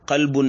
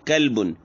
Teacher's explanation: موٹے قاف کی جگہ کاف پڑھے کلبن، تو قلبن کا معنی آتا ہے دل اور کلبن کا معنی آتا ہے کتا۔